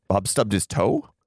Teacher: Or if you go up on the end, Bob stubbed his toe? Then we're asking, was it his toe he stubbed? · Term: prosody